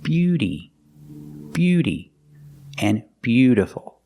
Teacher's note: We see the T in both of these words is pronounced like a fast D.